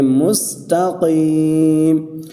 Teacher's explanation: سین کو سیٹی کے ساتھ پڑھیں گے